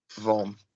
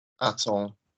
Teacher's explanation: So what's the soft sound of vendre? Je So say vendre and don't pronounce the D.